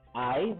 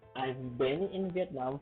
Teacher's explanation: emphasize the last voiced sound V